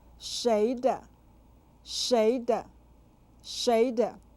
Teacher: said with a second and neutral tones